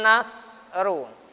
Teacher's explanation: Wa man nasru, ya, nasnya dibaca tafkhim juga, shad termasuk huruf tafkhim, dibaca tebal